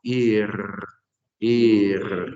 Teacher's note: la resh, a diferencia de nuestra R, no la hacemos con la punta de la lengua, esta letra final, sino que la hacemos como un poco, como hacemos gargarismos, no, ir, exacto.